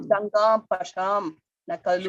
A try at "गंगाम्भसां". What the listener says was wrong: शा, why you are saying शा? गंगाम भसाम, स,